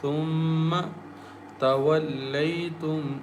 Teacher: Meme has shadda, so we recite with nasal sound with gunna